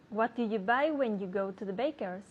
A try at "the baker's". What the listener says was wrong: To Don't forget the TH sound, okay?